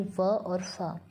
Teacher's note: Next है ज दंतोष्ठ्य। ऊपर के दांतों और नीचे के ओष्ठों की सहायता से उच्चरित ध्वनियाँ